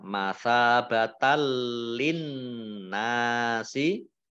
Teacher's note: Masa batan fathah alif mad tabi'i, fathah tanwin bertemu dengan huruf lam, bacaan idgham bila gunnah. Idgham masuk bi dengan la tidak, gunnah mendengung. · nun tasdid dibaca gunnah atau mendengung, ditahan 2 harokat.